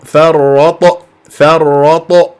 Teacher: مقلقله مفخمه قلقله صغرى في وسط الكلام